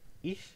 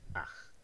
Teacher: So ich has a sound here that is the palatal fricative. It's the voiceless palatal fricative, ich. It also has a velar voiceless fricative